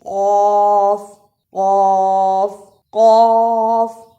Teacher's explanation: قاف کو موٹا پڑھا جاتا ہے، اسے کاف نہیں پڑھ سکتے